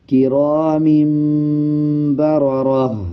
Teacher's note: جیسے پچھلے الفاظوں میں سیکھا کہ 2 زبر زیر یا پیش کے بعد یا نون کے اوپر جزم ہو، اس کے بعد با آ رہا ہو، تب میم کی آواز کو پڑھتے ہیں، میم کو ایڈ کریں گے اور غننے کے ساتھ پڑھیں گے. اس کی آواز کو ناک سے نکالیں گے.